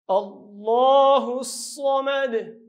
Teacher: الله ډک وایو ځکه مخکې ته چې راغلی زور راغلی دی، مخکې ته چې راغلی زور، او دا هی به دې صاد سره یو ځای کوو.